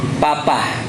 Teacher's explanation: huruf P bahasa Indonesia itu bibir atas ketemu bibir bawah